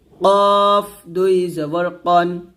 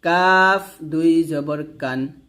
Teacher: কফটা মোটা হবে কাফটা পাতলা হবে